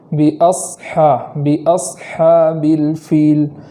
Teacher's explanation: سین کی طرح ہی پڑھیں گے، اور اس میں صرف موٹی آواز کا اضافہ کریں گے، جیسے باصحاب الفیل۔